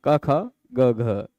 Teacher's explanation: तो क ख में जो वो गूंज नहीं होती वही अघोष है, और ग घ में जो हो रही वो घोष है